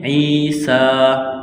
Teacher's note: یا ہے تو ایک الف کے برابر اس کو کھینچنا ہے، سین میں سیٹی کی آواز پیدا کریں گے، سین کو باریک کرنا ہے